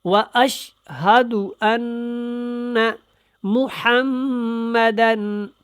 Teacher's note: انا اور محمد کے اوپر غنہ کرنا ہے کیونکہ یہ مشدد ہے، میم اور نون یہ دونوں، یہ دیکھیں۔